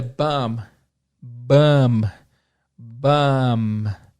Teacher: É meio que um B-A-M. Esse B do final, do bomb, é mudo. Você não fala bomb. · E o som do O não é som de O, tem mais um som de A. Então olha a diferença de novo.